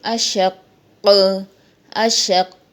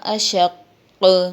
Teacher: وقف کریں گے اشق اشق، کیونکہ یہ مشدد حرف ہے قاف اور موٹے حروف میں سے بھی ہے، تو یہاں ہم نے جماؤ بھی باقی رکھنا ہے اور حرف قلقلہ کی صفت کے ساتھ یہاں پہ قلقلہ بھی کرنا ہے. تو وقف ہوگا اشق.